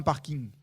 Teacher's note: c'est ce qu'on appelle en phonétique un appendice consonantique nasal